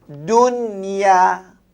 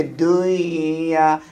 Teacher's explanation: Mesti baca nun tu dengan terang nyata dan tanpa dengung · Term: izhar mutlak